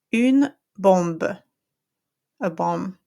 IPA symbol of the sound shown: ɔ̃